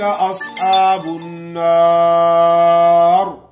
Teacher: یہ را موٹی ہوگی، کیوں کہ یہ را وقف کی حالت میں ساکن ہو گئی ہے اور اس سے پہلے زبر ہے۔ را ساکن ہو اس سے پہلے زبر ہو، را ساکن ہو اس سے پہلے پیش ہو تو وہ را موٹی پڑی جاتی ہے۔